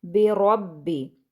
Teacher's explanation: रॉ को सख्त रॉ को जो है वो पुर पढ़ेंगे, यानी भारी आवाज़ में पढ़ेंगे क्योंकि उसके ऊपर हरकत है, ज़बर है।